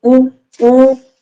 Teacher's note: और आवृत्तमुखी में क्या होगा कि जब वृत्त ना बने, जब आप कोई स्वर बोलो और आपके मुंह का ओंठ जो है वृत्त, कंप्लीट वृत्त ना बने, इनमें जैसे उ उ, अब इसमें देखो उ उ, लगभग बंद है मेरा ओठ